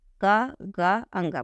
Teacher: जब आप का बोलते हैं, गा बोलते हैं और अंगा बोलते हैं, क्या का, गा और अंगा ये बोलते हैं, तो आपके मुख से कम हवा बाहर निकलती है। ध्यान दीजिए, मुंह पे हाथ लगा के इसे बोलिए, अपने मुंह पे हाथ लगा के इसे बोलिए।